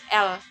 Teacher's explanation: Nah, kemudian ada sampingan atau lateral, di mana artikulator aktif menghambat aliran udara pada bagian tengah mulut, lalu membiarkan keluar melalui samping lidah, antara lain yaitu bunyi L.